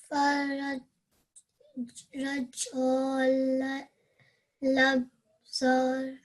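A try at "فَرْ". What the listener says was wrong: So this fa, it's got a fatha stroke, and we're joining it to this ra. So the sound is going to be far. Far. Far. I think you're getting confused because there's an alif there, but we are joining this fa with this ra sakin. So it's going to be far.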